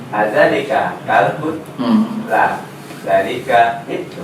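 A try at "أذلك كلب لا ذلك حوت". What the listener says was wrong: Zanya panjang. La zalika kitun. Ulang.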